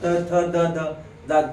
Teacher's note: मग हे कंठ्यवर्ण दंत्यवर्ण. दंत बघा त थ द ध जीभ दाताला लागते आहे का